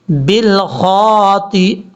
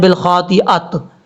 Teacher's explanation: جب وقف کریں گے تو تا کو ہا سے بدل دیں گے